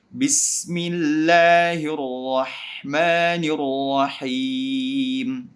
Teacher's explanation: hamzat wasl tidak dibaca di tengah-tengah bacaan